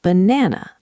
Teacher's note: We do not say banana with three strong a sounds. We stress the middle syllable. The first and last a become schwas.